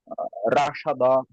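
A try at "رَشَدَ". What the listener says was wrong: র, র মোটা, রশাদা, রশাদা,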